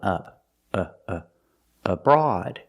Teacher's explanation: the first syllable is relax so it's a short uhuh sound like cup and up